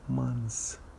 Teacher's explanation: We drop the th sound and we say it as months without the th, just to make it easy.